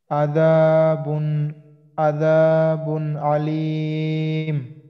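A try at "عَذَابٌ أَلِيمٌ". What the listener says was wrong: হ্যাঁ, এই হামজাটা যেন আইনের মতো না হয়। হ্যাঁ, আর আইনটা যেন আইনের মতো হয়। হ্যাঁ, আলিম, এখানে কয় আলিফ? হ্যাঁ, কেন 3 আলিফ?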